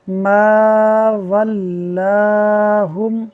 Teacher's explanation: الف سے پہلے میم ہے جو کہ باریک ہے تو الف بھی باریک پڑھا جائے گا